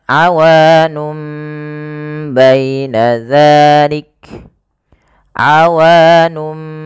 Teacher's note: Nun diganti dengan mim karena dia bacaan iqlab yaitu nunnya bertemu dengan huruf ba awalnya awun menjadi awanum maka di sini m itu dianggap mati